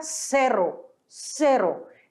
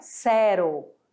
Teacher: O R, ele é sempre vibrante, então fica cerro, cerro, não é zero.